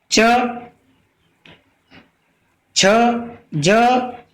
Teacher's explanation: च वर्ग के जो आपके वर्ण होते हैं वे आपके स्पर्श संघर्षी व्यंजन होते हैं